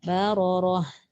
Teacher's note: syaratnya bila waqaf di situ tak boleh bunyi ta tapi dia gantikan dengan bunyi ha yang mati